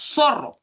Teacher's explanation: Entonces es un sonido peculiar porque nuestro dialecto del castellano a veces hace que nosotros no lo pronunciemos. Nosotros en vez de pronunciar el interdental, en el caso de las palabras con Z, ¿no? Obviamente antes de la vocal hemos reemplazado por esta alveolar